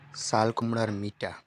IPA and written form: sal̪ kʊmɽaɾ miʈa (ꠍꠣꠟ ꠇꠥꠝ꠆ꠠꠣꠞ ꠝꠤꠐꠣ)